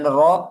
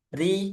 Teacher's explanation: Kemudian ro ketika fathah tebal. Ru ketika doma tebal. Ri ketika kasrah tipis.